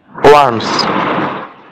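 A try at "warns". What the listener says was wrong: এখানে আমি শুরুতে বলে দিচ্ছি আপনাদের, এখানে এই আর উচ্চারণটা হবে না। আর উচ্চারণটা যদি না হয়, কেন হবে না, আর এর পরে একটা কনসোনেন্ট আছে, আর এর পরে কনসোনেন্ট থাকলে আর উচ্চারণগুলো সাধারণত কি হয় না। তাহলে ট্রাম্প ওয়ান্স, এখানে ট্রাম্প ওয়ার্নস, মানে রয়ের উচ্চারণটা হবে না এখানে, এটা মিসিং। তাহলে কি হবে, ট্রাম্প ওয়ান্স টেহরান রেসিডেন্স।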